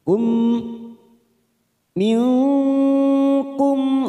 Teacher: ada huruf mim sukun bertemu Hamzah kita baca jelas tanpa mendengung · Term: izhar syafawi